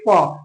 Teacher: देखिए प दोनों ओठ आपस में चिपक रहा है।